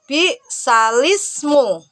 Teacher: Bacaan naql berarti memindahkan kasroh pada huruf hamzah ke huruf sebelumnya.